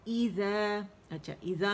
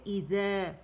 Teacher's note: ایزا میں اگر آپ دیکھیں حمزہ باریک ہے اور ای کی ساؤنڈ ہوگی